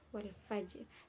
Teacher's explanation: jim di situ huruf qalqalah, maka disebut dengan huruf qalqalah, disebut dengan bacaan qalqalah, yakni dibaca dengan mantul.